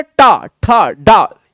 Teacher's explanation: एकदम से ऐसा लगता है जीभ एकदम पटक रहे हैं हम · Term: टा वर्ग